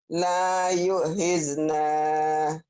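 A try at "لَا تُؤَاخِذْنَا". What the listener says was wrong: La tu'a bukan yu ya, Bu ya. La tu'akhirna. La tu'akhirna.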